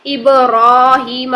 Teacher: اگر یہاں پر کھڑا زبر نہ ہو اور یہ الف مدہ کی شکل میں لکھا ہو تب بھی ہم ابراہیم کو ایسے ہی پڑھیں گے. ابراہیم، را کو 2 حرکات ہی لمبا کریں گے